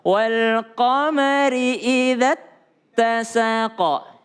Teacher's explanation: meskipun za-nya 2 harokat, panjang idza, tapi karena ada tasydid setelahnya, maka panjangnya tidak berlaku. Jangan wal qamari idza tasaqa.